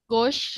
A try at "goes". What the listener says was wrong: Jadi bukan GOS ya, tapi GOES. Tambahnya ES.